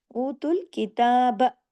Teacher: تا کے اوپر کھڑا زبر ہے، تا کھینچے گا الف کے برابر. اوتوا الکتاب، لیکن با کو زیادہ نہیں کھینچنا، کتاب، لیکن کلکلہ بھی نہیں کرنا، با زبر با.